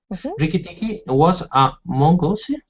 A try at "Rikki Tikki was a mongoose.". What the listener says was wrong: Yeah, good.